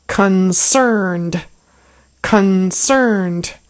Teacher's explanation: that word is two syllables the first syllable is very reduced there's almost no vowel sound there it's like awah and then cerned is harder so concerned also